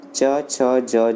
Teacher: च वर्ग जो होता है हमारा तालु से होता है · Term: तालव्य व्यंजन